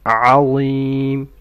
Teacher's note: Alim starts with an ayn from the throat.